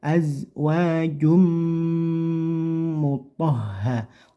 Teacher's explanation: langsung saja dimasukkan ke huruf mim terus jangan lupa didengungkan sekitar tiga harakat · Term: idgham bhunah